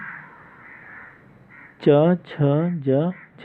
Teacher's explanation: स्पर्श संघर्षी व्यंजन जो है, स्पर्श संघर्षी व्यंजन च, छ, ज, झ कहलाते हैं